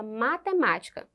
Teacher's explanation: quando a sílaba pronunciada com mais força for a antepenúltima agora mudou essa palavra é proparoxítona